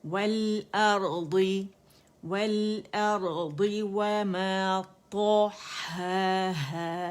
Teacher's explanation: طا موٹا ہے، ہا باریک اینڈ ہا باریک، ٹھیک ہے۔ والارضی، اور ارضی کو لمبا نہیں کریں گے۔